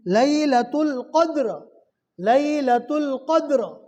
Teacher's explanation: زبر ہے. را ساکین سے پہلے والے حرف اور اس سے پہلے والے حرف پر زبر ہے، اس لیے رو کو پور پڑھیں گے. لیلۃ القدر، لیلۃ القدر.